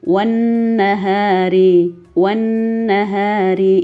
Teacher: di buku kalian bacanya sama dengan yang pertama bahwa ini juga hukum bacaannya ghunnah atau dengung didengung 2-3 harokat